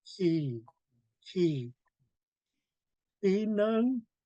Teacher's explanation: going to have a really strong he. It's coming from right above your voice box.